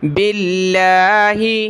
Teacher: لفظ اللہ سے پہلے با پر زیر ہے تو باریک پڑھیں گے